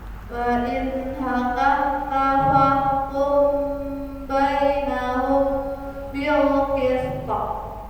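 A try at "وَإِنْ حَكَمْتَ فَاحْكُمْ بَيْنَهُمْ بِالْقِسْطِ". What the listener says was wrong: Bainahumnya kurang lama dikit. Coba lagi.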